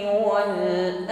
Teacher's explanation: kita sempurnakan sifat takrir ya irtiisan getar ujung lidah ketika mengucapkan ro ya yang kedua betaranya harus terkim ditebalkan Wal berikutnya ditutup pada